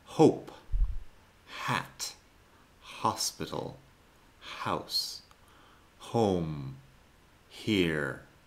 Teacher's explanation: En inglés la H se aspira, pero es un sonido muy suave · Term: aspiración suave